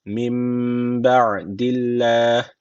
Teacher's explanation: Allah lafzı burada ince okunuyor. Neden? Çünkü öncesindeki harfin harekesi altta. · M derken burada arkadaşlar iklap tecviti var. Ne yapıyoruz? Dudaktan bir elif miktar tutmamız gerekiyor.